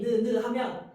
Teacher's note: 그리고 느느라고 발음했을 때 이번엔 혀가 이렇게 니은자 모양으로 해서 이빨 그 앞뒤 앞니 뒤에 닿지 느느 그지 그때 모양 혀 모양을 본떠서 니은을 만든 거야.